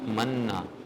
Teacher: یہ نون پر فتح ہے، اس کو ایک الف کے برابر بھی نہیں آپ نے کرنا، بس مننا، ٹھیک ہے، زبر.